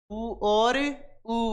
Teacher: उ और उ वर्ण तो ओस्ट पर एक दबाव महसूस होगा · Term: ओस्ट स्वर